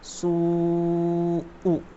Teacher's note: مد متصل کو 3 سے 4 الف کی مقدار کھینچ کر پڑھیں گے